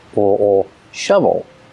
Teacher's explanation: Shovel. O. Followed by the dark L. O. Shovel.